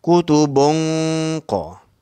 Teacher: Baris 2 di depan bertemu dengan qaf. Qaf ini ialah huruf isti'la. Jadi kita kena tebalkan sebelum bertemu qaf tu.